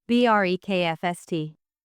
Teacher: In breakfast, the stress is on the first syllable, breakfast. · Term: word stress